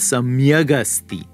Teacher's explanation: the word final kakara of samyak is now going to gain voicing and turn into a ga kara uh the voiced velar and it's going to swallow up that